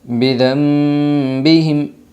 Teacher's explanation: اقلاب ہوگا نون ساکن کے بعد با آئی ہے، اس لیے نون ساکن کو میم سے بدل کر غنہ اور اخفا کے ساتھ پڑھے گی۔